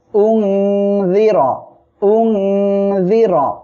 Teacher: র অক্ষের উপরে জবর আসছে মোটা করে পড়বেন